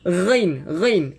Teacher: Ghain ni dengan kha, dua-duanya ada getaran. Cumanya ghain lebih lembut daripada kha. Ghain. Ataupun kita cuba buat macam kita kumur ayam, kemudian kita letak di tengkok kan.